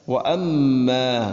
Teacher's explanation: ഇവിടെ മീമിന് ശബ്ദമുണ്ട്, മണിക്കണം